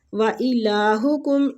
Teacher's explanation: الہ کو لام کو کھینچیں گے، کھڑی زبر ہے ، حکم میم کا ادھر اظہار کریں گے، اظہار شفوی ہو